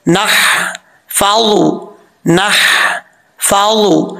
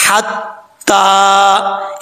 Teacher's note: यहां पर अक्सर लोग गलती करते हैं, वाव को पढ़ते वक्त होंठ गोल करेंगे और नून के बाद हा है, हा बारीक पढ़ा जाएगा, इसको भारी साउंड के साथ नहीं पढ़ना